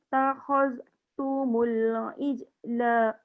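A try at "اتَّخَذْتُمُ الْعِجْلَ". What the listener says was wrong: Zal jangan ada qalqalah. Summat takhadhtumul ijla min ba'dih. Ijla.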